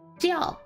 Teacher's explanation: So for this word, 叫, jiao. That's for the fourth tone, so you're going down in articulation.